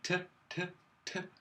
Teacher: The tongue is moving very much to the front, so just behind the teeth.